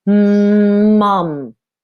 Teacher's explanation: at that word for a second m-u-m australian spelling english spelling m is made in the nose the airflow has to come out of the nose but the u sound ma it actually sounds like an r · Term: nasal sounds